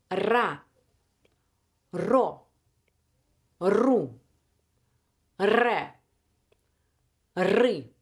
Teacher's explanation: lips slightly open, teeth close, tongue sides touching upper teeth, and the tip needs to vibrate. Because if there's no vibration, you're not doing R. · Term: Russian R